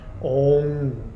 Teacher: Now you know it as OM, but that little dot above the M there is actually an NG sound